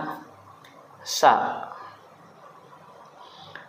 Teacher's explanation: huruf Sin itu makhrajnya atau tempat keluarnya adalah di lidah atau lisani tepatnya yaitu di ujung lidah dengan rongga antara Gigi atas dan Gigi bawah dekat dengan gigi bawah